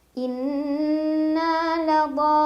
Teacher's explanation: Mad tabi'inya adalah alif sebelumnya fathah, huruf bertasydidnya lam. Dibacanya wajib panjang 6 harokat ya, dhodnya tidak ada perbedaan. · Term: mad lazim mutsaqal qilmi